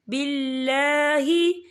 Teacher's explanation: यहाँ अल्लाह का नाम बारीक पढ़ा जाएगा क्योंकि अल्लाह के नाम से पहले ज़ेर है